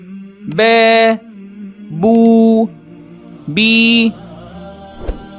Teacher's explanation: Note here, keep your tongue relaxed and your voice on. Ba is a voice sound, so your vocal cords vibrate when you say it.